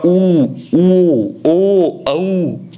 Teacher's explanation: वर्ताकार होते हैं जिन स्वरों का उच्चारण करते समय होठों का आकार वर्त की भांति गोल हो जाता है